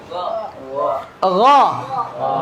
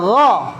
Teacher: Buka mulutnya gha. Naikkan pangkal lidahnya gha.